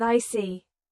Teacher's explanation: your tone drops slightly to show calmness